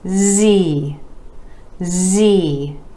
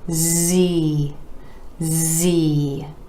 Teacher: Again, our E vowel sound coming after the consonant Z, made just like the consonant sound S, except you're adding your voice. This is a voiced sound.